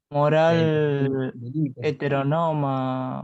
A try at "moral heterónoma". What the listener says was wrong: está muy bien, pero cambien el acento. Moral heterónoma. Heterónoma.